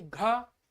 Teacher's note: और जब हम घा बोलते हैं कि घा, तो हमको जो है अंदर से ज्यादा हमको जो है प्राण निकालना पड़ रहा है, वायु निकालनी पड़ रही है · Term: महाप्राण